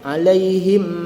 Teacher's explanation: mim sabdu katup bibir sempurna tahan gunah dua harakat